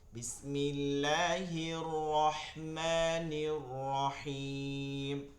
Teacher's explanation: র এটা ভাইব্রেশন হবে না